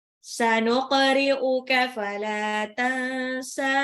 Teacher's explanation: Nunnya disamarkan karena dia ikhfa, nun sukun ketemu sin. Sinnya 2 harokat.